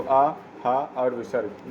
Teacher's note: आ, हा और विसर्ग ये कंठ वर्ण से बोले जाते हैं